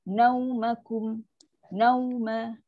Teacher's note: Nau, waw huruf lin, muncungkan.